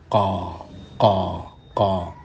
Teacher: qaf ini tergolong huruf tebal, yakni isti'la, pangkal lidah naik ke langit-langit, mulut, langit-langit mulut, sehingga suara menjadi tebal, qa, qa, qa.